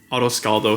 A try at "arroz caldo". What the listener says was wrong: Technically, you're supposed to roll the R's. Can you roll the R's?